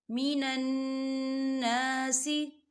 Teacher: نون مشدد ہے تو یہاں غنہ ہوگا